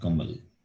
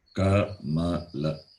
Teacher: we should not cut the last vowel. It should be pronounced as it is.